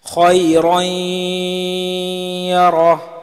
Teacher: gunne ke saath milakar padhenge isko idgham ma'al ghunna aur idgham naqis bhi kehte hain